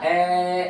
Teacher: ए को चाहे कितना भी लंबा बोलो, आपको अंत तक ए की ध्वनि ही सुनाई देगी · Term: स्वर